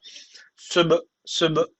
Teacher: kalkale tecvidi var ve hafif bir vurgulayacak dudaktan